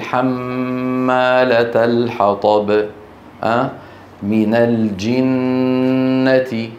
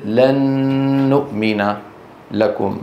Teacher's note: فالنون والميم المشددتان والمدغمتان غنتهما أطول ما تكون